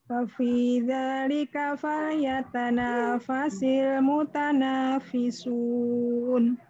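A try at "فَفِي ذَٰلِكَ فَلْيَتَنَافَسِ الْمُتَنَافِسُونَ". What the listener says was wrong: Bagus, fa-nya kena semua.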